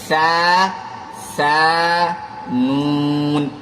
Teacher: سا میں زبان کی نوک کو اوپر کے دانتوں کے نوک پر لگائیں گے